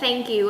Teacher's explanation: đưa lưỡi ra ngoài và phát giống như âm thờ của tiếng Việt Tuy nhiên chúng ta đưa lưỡi ra ngoài và cái cổ chúng ta không run và nhớ là đưa lưỡi ra rồi mới phát chứ không